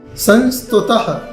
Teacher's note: यह 2 बिंदी है, विसर्ग है, इसमें आधा ह जैसा उच्चारण होता है।